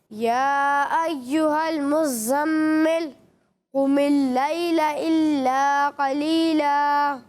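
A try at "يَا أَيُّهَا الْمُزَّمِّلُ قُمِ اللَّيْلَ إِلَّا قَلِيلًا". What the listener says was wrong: دیکھیں آپ نے قاف کو باریک پڑھا ہے, ٹھیک ہے. یہاں قاف لکھا ہوا ہے, قاف کو آپ نے پر پڑھنا ہے. یہاں پر بھی قاف کو پر پڑھیں گے, قاف کو باریک نہیں پڑھنا. اور دوسری غلطی یہ کہ یہاں پر مد منفصل ہے, اسے 2 یا 2.5 الف کے برابر کھینچنا ہے, اس سے کم نہیں کھینچنا, ٹھیک ہے.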